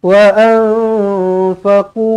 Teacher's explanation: Nun kosong bertemu fa sekali lagi, ikhfa hakiki juga, dengungkan dua harakat.